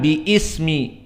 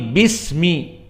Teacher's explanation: Karena dia masuk kepadanya ba, maka hamzahnya tidak dibaca tasqutu, tidak bi ismi rabbika, tapi bismi. Bukan bi ismi, tetapi bismi. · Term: hamzah wasl